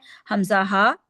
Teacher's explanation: हमजा हा जो है हलक के सबसे नीचे वाले हिस्से से अदा होता है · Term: हरूफ हलकी